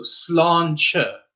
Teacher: T before an E is a slender T, so that's why it's the ch sound. So sláinte, all right?